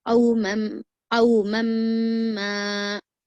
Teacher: मीम को जो है यहाँ पर कितना खींचेंगे आप, 4 हरकत के बराबर खींचेंगे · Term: गुन्ना